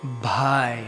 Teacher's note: so we say bhai and you can feel the air